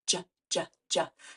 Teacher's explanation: I am I'm keeping it really crisp j j j so it's a stop sound which means we can't stretch it out but it is a voiced sound